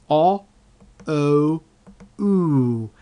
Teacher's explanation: you can tell that the mouth is actually getting smaller and more pursed during the process.